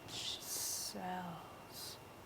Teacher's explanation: Lifting the tongue up, we know it's an L.